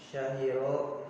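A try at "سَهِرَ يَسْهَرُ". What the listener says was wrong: Sahira. Sya atau sa?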